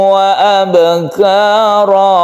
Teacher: tanwin bertemu dengan wawu, ini adalah idgham bi gunnah, maka tasydidkan ke wawu baru dipanjangkan.